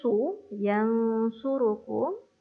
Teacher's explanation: huruf sad tebalkan, muncungkan mulut